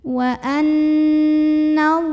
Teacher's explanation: Lam pada lafaz Allah dibunyikan secara tafkhim karena huruf sebelumnya yang nun barisnya di atas. Jadi bacanya ditebalkan ya, pangkal lidah dinaikkan.